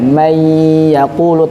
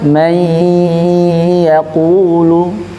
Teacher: nun sukun dibaca tanpa ghunah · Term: idgham tanpa ghunah